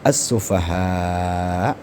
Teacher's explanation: Kalau tadi ketika mad bertemu hamzah di lain kalimat, nah ini satu kalimat ya. Maka dia dibaca mad wajib muttasil panjangnya lima harakat.